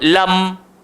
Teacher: So tak boleh nak baca lam, tak boleh panjang lagu tu. dia kena one step sahaja. Lam satu harakat sahaja. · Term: mim sakinah